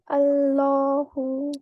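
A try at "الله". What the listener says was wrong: Make the lam heavier. Law.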